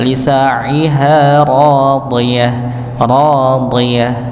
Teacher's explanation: tepi lidah bertemu dengan geraham bagian atas